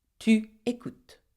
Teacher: But you do not pronounce the S.